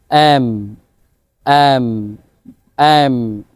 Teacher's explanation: এম, দুই ঠোঁট একসাথে লাগবে, দেন আপনি নর্মালি সাউন্ড করবেন এম, এম, এম।